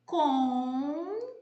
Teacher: Bem, se está acentuado, seja com qualquer acento, agudo, circunflexo, não importa, a sílaba que está acentuada é a tônica. Então veja que a sílaba tônica é a penúltima.